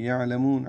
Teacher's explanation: عین وسط حلق سے ادا کریں گے ، لام کو جلدی پڑھیں گے، میم کو لمبا کریں گے،